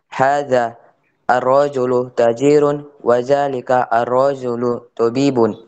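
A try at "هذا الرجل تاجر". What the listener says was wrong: Nah, jadi hadzal rajulu tajirun, panjang ya. Nah, boleh dibaca diputus-putus ya. Akan tapi lebih bagus rifallah dia disambung hadzal rajulu seperti yang kita pelajari sebelumnya.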